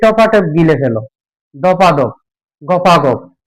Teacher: ধপ একটা শব্দ, ধপ একটা শব্দ, দ্রুত উচ্চারণ করতে গিয়ে মাঝখানে একটা আ স্বরধ্বনি নিয়ে এসেছি, সেটাই হচ্ছে অসমীকরণ। অর্থাৎ একই স্বরের পুনরাবৃত্তি দূর করতে গিয়ে আমরা মাঝখানে একটা আ ধ্বনি নিয়ে আসতেছি